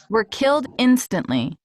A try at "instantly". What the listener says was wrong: Instantly, right? Instantly. Not instantly, instantly. Yeah, not forget the T.